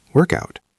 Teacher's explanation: It changes the rhythm completely. The first word work loses its ending and the second word out gains a beginning. It becomes cout.